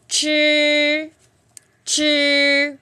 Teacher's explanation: này đọc chi chữ này chúng ta uống lưỡi lên và đọc bật hơi ra nó sẽ ra từ đầu lưỡi nó sẽ ra từ đầu lưỡi tại vì uống lưỡi lên